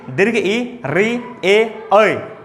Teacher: जीभ का अगला भाग, आगे का भाग काम करता है, इसलिए इसका उसके आधार पर इसका नाम रख दिया अग्रस्वर।